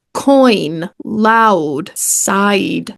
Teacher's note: two vowels in a single syllable in which the sound begins as one vowel and moves toward another